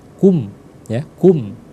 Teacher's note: Jadi dibaca jelas dengan kedua bibir yang tertutup. Enggak boleh lama. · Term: izhar syafawi